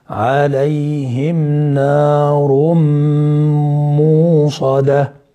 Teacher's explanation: ادغام بغنة لوقوع الميم بعد التنوين، وهو ادغام ناقص لبقاء الغنة وذهاب التنوين، ذهاب الحرف وبقاء الصفة اللي هي الغنة.